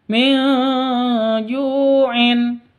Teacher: Nun mati bertemu dengan jim. Cara bacanya samar didengungkan.